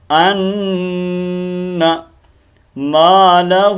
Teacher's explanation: اس کو نون کو لمبا کرتے ہیں، جب نون کو لمبا کرتے ہیں تو یہ غلط ہو جاتا ہے، الف مدہ بن جاتا ہے، تو ہم نے نون کو لمبا نہیں کرنا. ان مالہ، یہ مد ہے، اس کو ہم لمبا کریں گے، دو الف کے مطابق کھینچیں گے